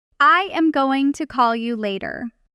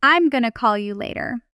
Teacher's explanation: Notice going to collapses into gonna.